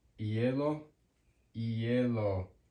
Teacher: the letter H, or English H, does not ever make a sound in Spanish. So it's always silent.